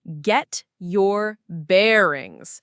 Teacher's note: The stress is on the verb get and the first syllable of bearings.